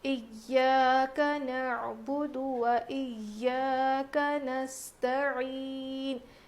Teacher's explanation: یہاں پر عین ہے تو نکالنا ضروری ہے ورنہ حمزہ پڑھیں گے تو معنی بدل جاتے ہیں